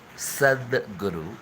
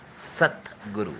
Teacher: Okay, Sadguru is a soft consonant. Okay, Satguru is a hard consonant.